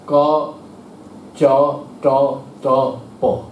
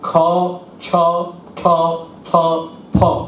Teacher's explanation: অল্পপ্রাণ হচ্ছে 1 আর 3 নম্বর, ক চ ট ত প, বেশি ধাক্কা দিচ্ছি না, কিন্তু খ ছ ঠ থ ফ এগুলোতে বেশি ধাক্কা দিচ্ছে, মহাপ্রাণ